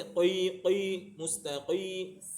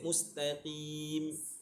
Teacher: qof dia tafkhim tapi ketika baris bawah dia jadi nisbi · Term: Tafkhim nis nisbi